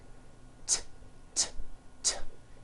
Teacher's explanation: It's unvoiced. Your vocal cords are not vibrating. T, t. Now don't change a thing with your mouth. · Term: T sound